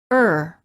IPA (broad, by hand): ər